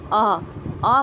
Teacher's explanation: इसके उच्चारण में जीभ का मध्य बीच वाला भाग कार्य करता है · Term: मध्य स्वर